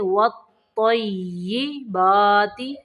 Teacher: واو کو تو کے اندر ملائیں گے